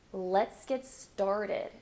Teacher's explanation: notice how I'm stressing started